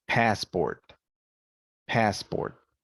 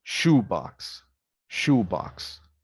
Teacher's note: compound nouns noun plus noun units have primary stress in high pitch on the first noun and secondary stress and low pitch on the second now for